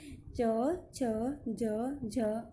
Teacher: इनके उच्चारण में जीभ हमारे कठोर तालु को छूती है, इसलिए इन्हें तालव्य व्यंजन कहा जाता है।